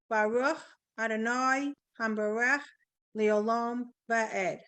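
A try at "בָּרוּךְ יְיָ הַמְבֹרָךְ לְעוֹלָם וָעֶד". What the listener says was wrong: Right. Very good.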